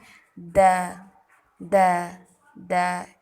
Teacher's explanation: زبان کی نوک کو سامنے والے اوپر کے 2 دانتوں کی جڑ سے لگا کر باریک آواز میں